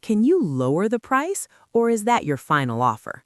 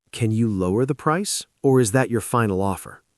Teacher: Notice the intonation. It goes up on the first choice and down on the second.